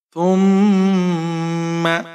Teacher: میم کے اوپر زبر ہے، بغیر کھینچے پڑھیں گے، غنہ کریں گے، میم کا غنہ ہے